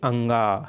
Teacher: पूरा मुंह बंद हो जाता है, ऊपर से भले मुंह खुला रहता है लेकिन हवा कहाँ से पास होता है, नाक से होता है ना